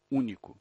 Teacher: naquelas palavras em que a antepenúltima sílaba é a sílaba tônica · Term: proparoxítonas